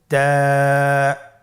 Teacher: তা হরফটি বারিক হরফ এবং এক আলিফ টেনে পড়তে হবে।